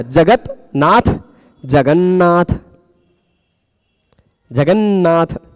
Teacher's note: जगन्नाथ ता के जगह पे न हो गया